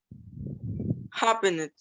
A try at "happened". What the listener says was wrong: Okay, remember you don't pronounce the E. Happened. A is the stress. So here, happened is the on stress. Remember, we have stress are on stress. Stressed vowel on stress. Remember, stress es como en español, como el acento gráfico, ¿verdad? O prosódico.